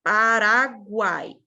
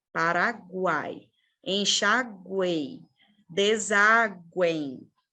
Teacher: Aqui eu escuto os dois, ó. Eu tanto escuto G, quanto U, quanto A, quanto I. Então, por isso que nessas palavras aqui a gente vai ter um encontro vocálico ao invés de um dígrafo.